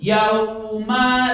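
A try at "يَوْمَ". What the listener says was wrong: nah jangan nyeret yau masuk ke waw kan huruf sukun ditekan ya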